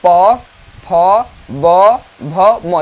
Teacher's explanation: ओष्ठ तो समझ ही रहे हैं, दोनों ओष्ठ आपका स्पर्श करना चाहिए। तो जब दोनों ओष्ठ स्पर्श कर रहे हैं और जिस वर्णों के उच्चारण होते हैं वह है आपके पवर्ग। · बिना ओंठ सटाए हुए आप पवर्ग को नहीं बोल सकते हैं। तो पवर्ग हो गया ओष्ठ है।